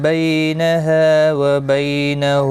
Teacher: یالین ہے تھوڑا نرمی کے ساتھ کھینچ کر ادا کریں